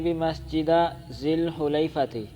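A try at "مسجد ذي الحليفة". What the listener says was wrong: سمیاتی بمسجد، مسجدہ کیوں ہے دشا کر یار،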